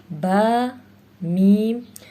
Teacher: با اور میم دونوں ہونٹوں کو ملانے سے ادا ہوگا